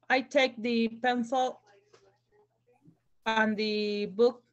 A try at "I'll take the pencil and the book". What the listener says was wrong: Sí, y recuerda pronunciar esa palabra con L, I'll.